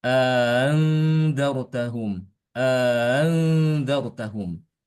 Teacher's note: Yang pertama adalah idkhal, ya, dengan tashil hamzah yang kedua. Ya, memasukkan alif, setelahnya hamzah yang keduanya itu ditasilkan bacaannya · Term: Tashil dengan idkhal